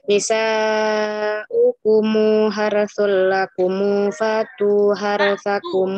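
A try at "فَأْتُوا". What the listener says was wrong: Ya, hamzahnya masih tahqiq.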